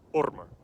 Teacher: the Scandinavian languages drop the sound of w very early on before a rounded vowel.